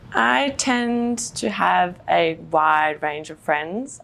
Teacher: All her sentences are joined together. She doesn't have any particularly noticeable breaks between the sentences. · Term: fluency